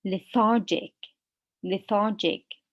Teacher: in the adjective the stress is on the second syllable the second part we say lethargic lethargic